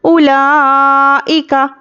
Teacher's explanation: उलाइका, हमज़ा पर पेश है, जल्दी पढ़ेंगे। वाव पर कुछ भी हरकत नहीं तो हम वाव को नहीं पढ़ेंगे। हमज़ा पर ज़ेर है, काफ पर ज़बर है, हरकत को जल्दी पढ़ेंगे।